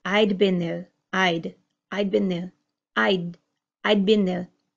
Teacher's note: the D is almost completely gone in my pronunciation. You don't hear I'd space been.